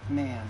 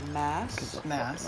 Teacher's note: You've got an M and an N. And normally with the Southie accent, that ah sound becomes nasal prior to an M or an N.